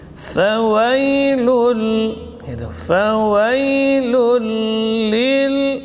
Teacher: Makna idgham idkhal, memasukkan, ya, bunyi tanwin dalam huruf idgham tanpa dengung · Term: idgham bila gunnah